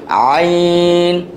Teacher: তাহলে এটা হবে হচ্ছে আইন, গলার ভিতর থেকে একটু চেপে আসবে